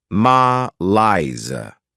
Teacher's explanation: this word has two syllables and the stress is on the second syllable